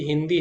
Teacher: हिंदी है उसमें तो ना की तरह उच्चारण हो रहा है अनुस्वार का